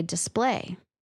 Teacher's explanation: I would normally put the stress on the second syllable and say display.